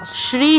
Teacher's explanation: তালব্যস এর উচ্চারণ স্রী হবে শ্রী হবে না